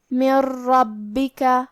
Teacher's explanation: را حروف الادغام بغیر غنہ میں سے ہے تو ہم یہ نون کو را میں ملا کے بغیر غنہ سے لیکن تشدید کے ساتھ یہ حکم کو ادا کریں گے